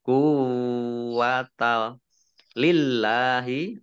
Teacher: Allahnya dibaca tipis karena harokat di depannya kasroh. Lam fathah berdiri mat tobi'i panjang 2 harokat.